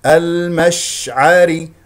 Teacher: شين فيها تفشي يجري فيها الصوت والنفس